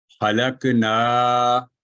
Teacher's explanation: اس لفظ میں الف مدہ نون مفتوح کی آواز کو 2 حرکات کے برابر لمبا کرتا ہے